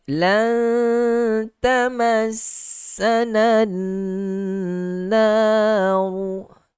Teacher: Wajib berikan hak dengung dengan tingkatan gunnah yang paling sempurna pada huruf nun yang bertanda 2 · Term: wajibul gunnah